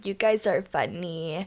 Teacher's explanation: she kind of has like a sassy like vocal fry type of voice